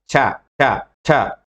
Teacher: ప్లాసివ్ లాగా మొదలయ్యి ఏమవ్వాలి? ఫ్రికేటివ్ లాగా ఎండ్ అవ్వాలి. ఇప్పుడు చూడండి, చ చ చ అంటే ఒకేసారి ఆపి మాట్లాడుతున్నట్టు మాట్లాడుతున్నాం కానీ ఎండింగ్ వచ్చేసరికి మళ్ళీ ఫ్రికేటివ్ లాగా స్టార్ట్ అయింది. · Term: అఫ్రికేట్స్